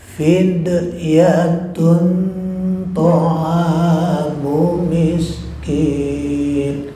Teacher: Berikutnya ta'am, ada alif mad tabi'i, panjangnya 2 harakat.